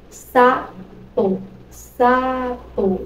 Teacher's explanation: Então, você pronuncia o SA com mais intensidade. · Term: vogais tônicas